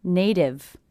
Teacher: I hear this t as a d because again it's a t coming between two vowel sounds will be a flap T sounds like a d like a